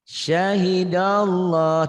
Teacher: Tebal. Kenapa tebal? Karena sebelum lafaz Allah berharokat fathah.